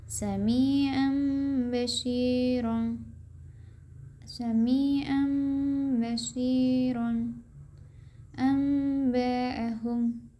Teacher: Iklab adalah nun sukun atau tanwin bertemu huruf ba. Adapun cara membacanya mengganti nun sukun dengan mim sukun dan disertai gunnah 2-3 harokat